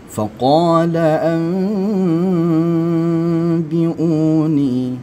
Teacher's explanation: ini menunjukkan bunyi ketika nun mati bertemu dengan ba itu berbunyi mim, ya. Berbunyi mim dia. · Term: iqlab